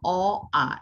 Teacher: এটা উচ্চারণের স্থান হচ্ছে কণ্ঠ থেকে উচ্চারিত হবে, আর উচ্চারণ স্থান অনুসারে নাম হচ্ছে কণ্ঠধ্বনি।